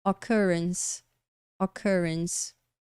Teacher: E como de costume, adivinha? A letra E aqui do finalzinho a gente ignora. Tá vendo? A gente termina com um som de S.